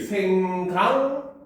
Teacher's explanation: 그러면 여기서는 지금 변화가 어떻게 일어났어? 받침 기역이 뭘로 변했습니까? 이응으로 변했죠. 뭐 때문에? 뒤에 이어지는 미음 때문에.